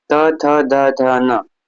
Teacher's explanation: त वर्ग में कौन होते हैं त थ द ध न और इनका उच्चारण स्थान क्या है दंत है